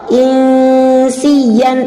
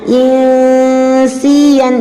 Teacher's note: untuk sinnya insian dibaca tipis saja, tidak boleh tidak boleh sampai ditebalkan.